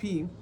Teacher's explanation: the sound P is a voiceless bilabial plosive. So by voiceless, I mean when you are producing the sound P, there is no vibration at the vocal cords here.